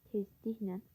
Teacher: Tezliklə sözündə isə vurğu ikinci hecanın üzərindədir.